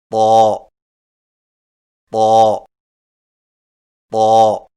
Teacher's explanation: طا کی ادائیگی میں زبان کی نوک کو سامنے والے اوپر کے دو دانتوں کی جڑ سے لگا کر اور زبان کے پچھلے حصے کو تالو کی طرف بلند کرتے ہوئے موٹی آواز میں پڑھیں، یعنی طا طا طا۔